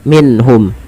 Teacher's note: Nah, izhar di sini izhar halki bukan izhar syafawi, yaitu adanya nun sukun bertemu dengan ha. Cara membacanya itu diperjelas suara nunnya